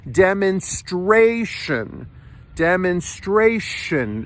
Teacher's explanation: there's an Str blend in the middle of the word and you have to push the r